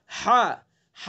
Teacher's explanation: हा का मखरज है वस्त हल्क, यानी हल्क का दरमियानी हिस्सा। हल्क का जो दरमियानी हिस्सा है, बीच का हिस्सा है, हा को वहां से अदा करेंगे हा, हा, हा, ठीक है।